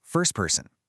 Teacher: The T is squished between an S and a P. So we just say first person. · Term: deletion